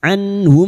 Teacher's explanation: nun sukun bertemu ha idhar halq nun sukun dibaca jelas tanpa mendengung